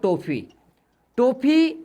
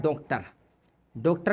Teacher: आ से ज्यादा व ओ से कम ध्वनि होती है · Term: आगत स्वर ओ